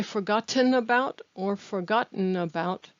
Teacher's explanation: the word about attaches to the word forgotten